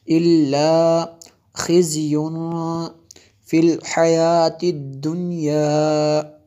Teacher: تنوین کے بعد فا حروف اخفا میں سے ہے، یہاں پہ اخفا ہوگا اس لیے غنہ کیا ہم نے